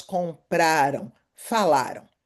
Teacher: Atenção, a pronúncia não é compraram, é compraram. A sílaba tônica é a segunda do final para o início.